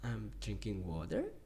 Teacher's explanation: a declarative statement but it ends with a high intonation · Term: rising intonation on declaratives